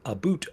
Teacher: it's an exaggeration of the ow sound becoming an o sound